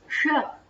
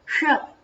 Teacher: मूर्धया अस्य उच्चारणं कृत्वा पश्यन्तु श जिह्वा तत्र किञ्चित् स्पृशेत् श तदानीं शुद्धं रूपं भवतः मुखात् निर्गमिष्यति श अस्तु एवं तो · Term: मूर्धन्यशकारः